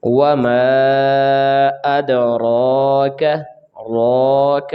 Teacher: را کو پر پڑھیں گے، کاف کو جلدی ادا کریں گے